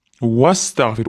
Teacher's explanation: O'rtadiga alif o'qilmagani undan keyingi harfda sukun bilan boshlangani uchun vas deb urushtirib yuboramiz.